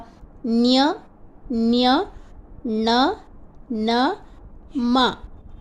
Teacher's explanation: ಸಹಾಯದಿಂದ ಉಚ್ಚರಿಸಲ್ಪಡುವ ವರ್ಣಗಳನ್ನು ಅನುನಾಸಿಕಗಳೆಂದು ಕರೆಯುತ್ತೇವೆ ಉಚ್ಚಾರಣಾ ವಿಧಾನ ಆಯಾ ವರ್ಗಕ್ಕೆ ಸಂಬಂಧಿಸಿದ್ದೆ ಆದರೂ ಉಸಿರು ಬಾಯಿಯ ಮೂಲಕ ಹೊರಹೋಗುವ ಜೊತೆಗೆ ಮೂಗಿನ ಮೂಲಕವೂ ಹೊರಹೋಗುತ್ತದೆ ಹೀಗೆ ಮೂಗು ಮತ್ತು ಬಾಯಿಯ ಸಹಯೋಗದಿಂದ ಉಚ್ಚರಿಸಲ್ಪಡುವ ನ್ಯ ನ್ಯ ಣ ನ ಮ